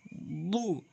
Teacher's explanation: দটি জিহ্বার গোড়া উপরে মাড়ির সঙ্গে লাগাবেন